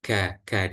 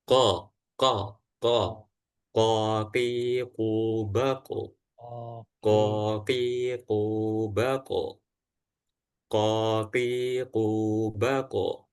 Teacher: kalau kaf itu depan eh bagian tengah menempelnya tengah dan kof itu bagian ee belakangnya aja